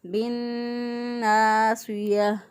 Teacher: نون کو سیدھا با کے ساتھ ملا دیں گے، با زیر نون بن پڑھ دیں گے